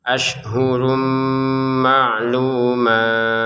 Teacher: Ini huruf shin, kemudian ada tanwin ya, bertemu dengan mim, kita masukkan dengan dengungannya